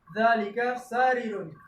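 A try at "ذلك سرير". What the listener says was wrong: Ada yang ganjal enggak? Sanya jangan panjang. Jangan sarirun. Sarirun.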